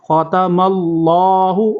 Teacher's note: خا کو پر کریں گے، میم کو آگے اللہ کے ساتھ ملائیں گے